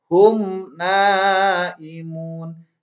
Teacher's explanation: Jangan dibaca hum enggak boleh. Enggak boleh ada dengung, tapi harus diidharkan. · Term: idhar syafawi